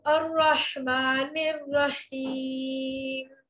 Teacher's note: होठ मुकम्मल बंद, होठों की खुश्की को मिलाकर मीम अदा होता है।